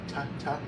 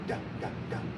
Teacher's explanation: But same thing, tongue at the tip of the mouth, or tip of the roof of the mouth, hard D, da, da, da, da, da. Instead of a ta, ta, it's a da, da, da. You're adding that reverberation.